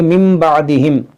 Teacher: یہاں پر دیکھیں کیا پڑھیں گے, من بعدہم, اس میم کو پڑھیں گے کیونکہ نون ساکن کے بعد با ہے, یہاں پر اقلاب کا قاعدہ لگے گا. تنوین کے بعد یا نون ساکن کے بعد جب بھی حرف با آئے گا تو وہاں پر آپ کو تھوڑا سا میم ملے گا, اور اس میم کو پڑھیں گے, اس کو پڑھیں گے من بعدہم.